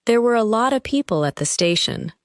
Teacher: The words lot of become one sound group.